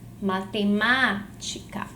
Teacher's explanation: Qual é a sílaba tônica de matemática? É a sílaba ma.